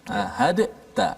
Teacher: dal itu dimasukkan secara totally dalam ta. Sebab tu ada sabdu di atas ta dan tidak ada apa-apa tanda di atas dal. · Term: idgham